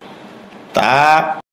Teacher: জিহ্বার আগা উপরের দাঁতের গোড়ায় ভিতর দিয়ে লাগবে, মুখ খুলে দিবে, এক আলিফ পরিমাণ লম্বা হবে।